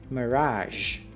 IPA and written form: məˈrɑʒ (Mirage)